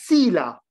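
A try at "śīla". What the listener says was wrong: C'est Shila, le CH. C'est pas Sila, Sila c'est autre chose. C'est bien le chat comme Shivananda.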